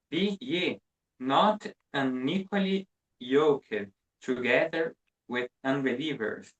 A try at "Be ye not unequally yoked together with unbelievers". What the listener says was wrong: Okay, very well pronounced.